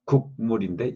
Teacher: 기역의 비음 위치, 기역 위치에서 비음으로 바뀌다 보니까 이응이 되는 거죠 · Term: 비음동화